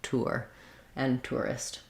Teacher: my lips make that glide as i'm moving from the rounded u shape into the unrounded er shape